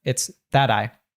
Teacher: when we have a t in American English between two vowel sounds so here between a and an i it usually changes to a D sound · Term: American T